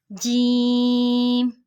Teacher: जुबान के दरमियान और ऊपर के तालु के दरमियान से